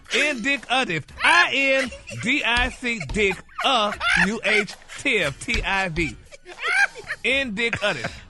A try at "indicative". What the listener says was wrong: No. If you say it all together, indicative. you gotta connect the dick and the indicative. Indicative.